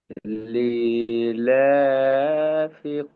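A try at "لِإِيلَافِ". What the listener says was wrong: ই টান দেন, ই টান দেন। লি ই।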